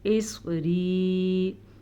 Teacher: صاد کو پر پڑھیں کیونکہ صاد حروف مستعلیہ میں سے ہے